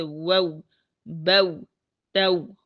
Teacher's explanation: واو ساکن سے پہلے حرف مفتوح کی آواز کو اوپر کی طرف بلند کرتے ہوئے دونوں ہونٹوں کو پوری طرح گول کر لیتے ہیں، جیسے وو بو تو، فتحہ ادا کر کے پھر ہونٹوں کو انتہائی لطافت اور نرمی سے گول کر لینا ہے، ٹھیک ہے، اور اس طرح ادا کریں کہ اگر کوئی مد کرنا چاہے تو مد بھی کر سکے، ٹھیک ہے۔